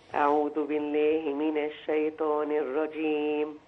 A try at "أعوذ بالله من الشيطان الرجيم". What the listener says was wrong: الطاء من الشيطان دي تفخم، هي مش حروف الأربعة بس، ليه قلتها؟ لأن معايا التاء، فالتاء هتبان غير الطاء،